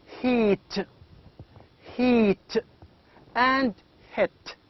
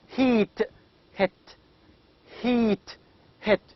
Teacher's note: when I say heat or hit, it means that the tongue is high and front. Now, because the sound is made with the front part of the mouth in a raised position. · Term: high front